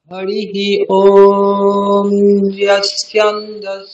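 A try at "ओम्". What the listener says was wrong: ওম ম বলতে হবে, ঠিক আছে? ওম ম, ওম, ওম বলে আর একটা ম এক্সট্রা বলতে হবে, ঠিক আছে?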